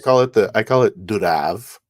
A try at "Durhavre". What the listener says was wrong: you have to put some more R in there. It's my revenge for not being able to say the H and TH.